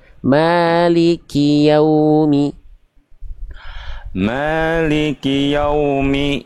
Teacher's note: ya pakai u, jangan yau, jangan nanggung. Kalau nanggung jadinya kayak o.